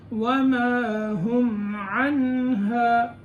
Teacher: نون کو پکڑ کے ہا ادا کرنا ہے، نون کو چھوڑنا نہیں ہے ورنہ قلقلے کی آواز پیدا ہو جائے گی، حرکت نہیں ہونی چاہیے نون میں۔